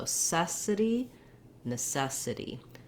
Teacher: Our NE is no longer a clear vowel, no longer long. It's now the one that has the schwa sound, and it sounds like na.